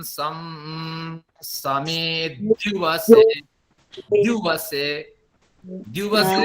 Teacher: द्यू तो संयुक्त अक्षर है, इसलिए उसके पहले वाले अक्षर मी पर जोर होना चाहिए।